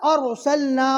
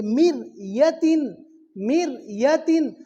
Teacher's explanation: جزم والے را کو بہت باریک کر کے پڑھیں گے